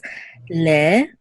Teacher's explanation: in Israel, they don't really emphasize the a. You would just say le.